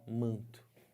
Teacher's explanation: Aqui o N não é falado, ele só está nasalizando o A. Ele faz parte, esse N aqui, de um dígrafo. · Esse N aqui não tem um som próprio.